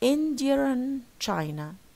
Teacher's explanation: We want to link, so people insert or intrude an R. So you say Indian China. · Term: intrusive R